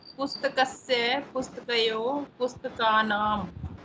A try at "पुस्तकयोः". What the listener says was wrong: हाँ जब आप पुस्तकयोः बोल रहे हैं तो विसर्ग का उच्चारण होना चाहिए पुस्तकयोः।